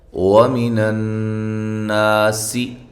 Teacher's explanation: یہاں نون مشدد پہ غنہ ضروری ہے. نا الف مدہ، سی سین کو باریک سیٹی کے ساتھ.